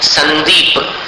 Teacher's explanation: अब संदीप में अनुस्वार का उच्चारण कैसा है? न के समान है।